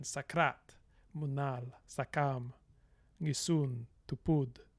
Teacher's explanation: the main stress will always be on the major syllable. So you have this kind of iambic pattern